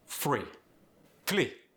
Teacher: Notice how the R became an L.